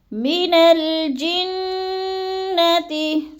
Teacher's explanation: نون کو لام کے ساتھ ملا کر پڑھنا ہے، من الجنتی، نون مشدد ہے سختی سے جماؤں کے ساتھ پڑھیں گے